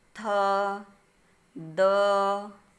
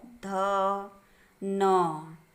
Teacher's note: जीभ का नुकीला भाग ऊपर के दांतों को स्पर्श करता है, दंत व्यंजन कहलाते हैं।